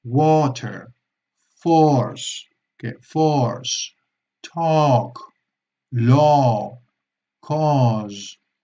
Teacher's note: la O abierta, que es como si fueran dos O's seguidas.